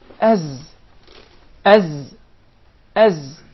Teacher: So the Zay comes from the tip of the tongue and the palates of the two front top incisors at a point just above the two front lower incisors.